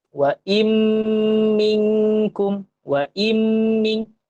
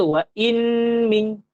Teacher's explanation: Jadinya kat sini, kita akan baca huruf mim. Kalau nun mati jumpa mim, kita baca mim. Nun tu kita tak payah baca. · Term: idgham ma'al gunnah